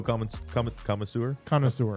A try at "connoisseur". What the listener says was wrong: There's no D. Connoisseur.